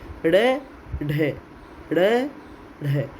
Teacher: इसमें जिह्वा का जो अगला हिस्सा है वो एकदम तेज़ी से ऊपर उठता है · वे व्यंजन जिनके उच्चारण में जिह्वा का अग्रभाग वेग से ऊपर उठकर तालु से टकराकर तत्काल उसी वेग से नीचे लौट जाता है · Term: उत्क्षिप्त व्यंजन